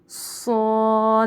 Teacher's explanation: صاد حرف صفیرہ ہے، سیٹی کی آواز سے پڑھیں گے، اور حرف مستعلیہ ہے تو موٹی آواز میں بھی پڑھیں گے